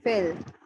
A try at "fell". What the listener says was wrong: Fell. Okay, not fail. Kind of. What I've observed is that with some words with e, you have a tendency to use a sound, um, and so you kind of mix up the s sound and a sound.